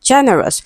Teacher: Generous is stressed on the first syllable.